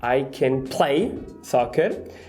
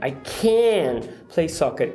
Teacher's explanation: Você tem uma mudança aqui da entoação. Na primeira frase, você entoa o verbo, I can play soccer. E a segunda, você entoa o can